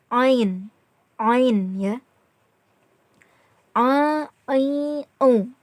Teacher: Huruf ain ini cara pengucapannya itu keluar dari tenggorokan bagian tengah.